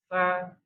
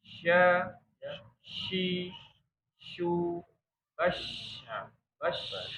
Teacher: Ini untuk sifat tafasyi, menyebarnya angin mengenai gigi bagian dalam dan atas dan bawah.